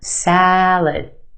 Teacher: the second syllable is our schwa it said very quickly and we have that sound salad salad